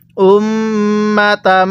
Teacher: মিমের উপর তাসদিদ হলে সেখানে আমাদের অবশ্যই গুন্নাহ করে পড়তে হবে